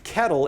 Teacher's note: it's a different type of L. The L has essentially become a vowel.